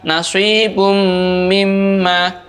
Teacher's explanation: Maka cara membacanya, suara nun sukunnya atau suara tanwinnya dibaca masuk, diikuti dengan suara mendengung. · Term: idgham bi gunnah